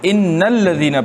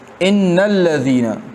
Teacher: نون کو ڈائریکٹ لام کے ساتھ لگا لیتے ہیں